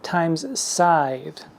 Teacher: Time begins with that hard tick of the T, and it goes down through the M, and the scythe with the S at the beginning glides through to the TH, time's scythe.